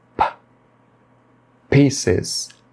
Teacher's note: o P ele é pronunciado com aspiração, ou seja, você tem que pronunciar expelindo um pouco de ar